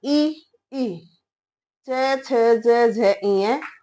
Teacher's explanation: जो य होगा वो तालब से बोला जाएगा